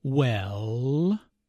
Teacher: notice how the vowel is drawn out to sound like well this can be used as a way